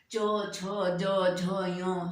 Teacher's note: इन सब का उच्चारण स्थान है तालू